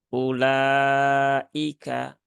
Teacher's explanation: u-nya cukup dibaca satu harakat saja jangan dibaca lebih dari dua harakat Jadi cukup ulaika seperti itu lanjut ke ayat berikutnya yaitu di